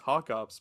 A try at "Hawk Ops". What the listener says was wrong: And also, kind of when you're saying it, Delta Force Hawk Ops. It sounds like it sounds like you're saying hot cops.